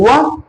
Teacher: तो व के उच्चारण में आप देखेंगे व, एक तो ओठ आ रहे हैं, दूसरा जीभ दांतों से टकरा रही है, तो ये क्या हो गया आपका, दंत ओष्ठ।